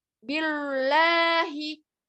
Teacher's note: Nah, ba kasrohnya jangan sampai tebal.